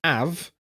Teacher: H and F are often skipped or slurred, where have becomes av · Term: slur certain letters